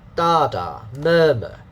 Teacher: Okay, and then the pronunciation, syllable one, two syllables, stress mark, and then dot, two parts. So syllable one is stressed.